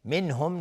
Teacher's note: منهم نون ساکن بعدش های دو چشم اظهار حلقی